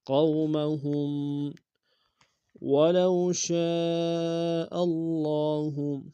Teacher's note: ولو میں واولین ہے بغیر کھینچ پڑیں گے